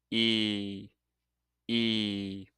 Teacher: Now let's talk about the E sound. This one is a long, tense vowel sound.